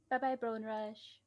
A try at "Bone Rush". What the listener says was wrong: Brone Rush. you said you pronounced it like Brone Rush.